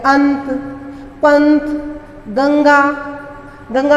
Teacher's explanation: इनका है उच्चारण स्थान अनुनासिक, क्योंकि इनका उच्चारण नाक से होता है